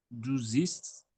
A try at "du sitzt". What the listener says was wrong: It's not zist. Sometimes if the T is at the end is halfway to pronounce, just say du sitzt. The T at the end. If it's halfway to pronounce, you can just no problem. Du sitzt.